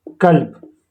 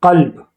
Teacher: کاف قاف کی مخرج سے تھوڑا منہ کی طرف ادا ہوتا ہے، یعنی منہ کی طرف کھینچ کر یہ آواز کاف کی ادا ہوتی ہے، اور اس سے پیچھے یعنی گلے کی طرف وہاں سے قاف ادا ہوتا ہے۔